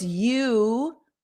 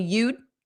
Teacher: Notice you, the sound continues a little bit more, and you'd, when I add the D, which represents the contraction of you would, you'd, the sound closes because my mouth goes into that you'd, into that D position.